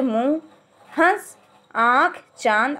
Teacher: बिंदु जो कि किसी भी व्यंजन के ऊपर लिखा जाता है इसमें स्वरों का उच्चारण नाक और मुंह दोनों से किया जाता है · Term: चंद्रबिंदु